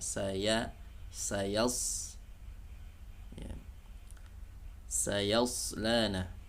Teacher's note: huruf sebelumnya ya bukan huruf tebal, jadi jangan ditebalkan suara ya, ya, tapi tipiskan suara ya